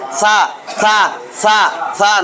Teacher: সা উচ্চারণ করবেন, জিহ্বার আগাটা উপরের দাঁতের আগায় লাগাবেন।